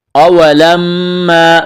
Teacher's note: میم مشدد ہے، آواز ناک میں چھپائیں گے، غنہ کریں گے